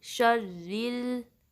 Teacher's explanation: उसके बाद रॉ पे तशदीद है तो शीन को रॉ से मिलाएंगे और रॉ की कसरा को शार्पली अदा करते हुए लाम से मिलाएंगे